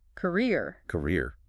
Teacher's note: For career, the stress hits the second syllable.